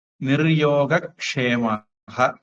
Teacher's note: அடுத்தது நிஹி யோக சேரும்போது விசர்க்கம் இர்ரா மாறி நிர்யோக அப்படின்னு மாறிடும்